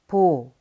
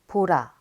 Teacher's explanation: b is a breathy stop plosive pronounced similarly to b